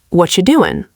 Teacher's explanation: Americans often change the T in what to a soft D sound, and are you becomes cha or ya.